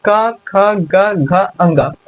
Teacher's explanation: कंठ की सहायता से। जब हम क बोलते हैं ना तो ये कंठ से निकलता है। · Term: क वर्ग